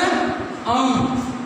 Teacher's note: तो पहला है अनुस्वार, तो अनुस्वार क्या आता है इसके उच्चारण में वायु मुख और नासिका, वायु मुख और नासिका दोनों से निकलती है